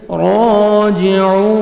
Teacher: را کو مرکھڑا زبر ہے 1 سیکنڈ کھینچیں گے اور را کو موٹا کر کے پڑھیں گے واو مدہ 1 سیکنڈ عین کو اپنے کھینچنا ہے اور عین